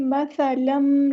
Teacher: سا کو نرمی سے ادا کرنا ہے اور سیٹی لے کر نہیں آنی۔ مثلم، لام پہ 2 زبر ہے، اس کو میم کے اندر مکس کر دینا، ادغام کرنا ہے ہم نے یہاں پر، ادغام مع الغنہ ہوگا یہاں پر۔